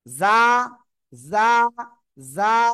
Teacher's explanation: জিহ্বার আগা সামনের নিচে দুই দাঁতের পেট ও আগার সঙ্গে লাগিয়ে উচ্চারণ হবে।